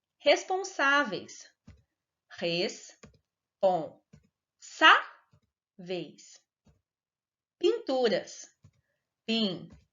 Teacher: Nestas duas palavras, a sílaba tônica é a penúltima sílaba, por isso elas são paroxítonas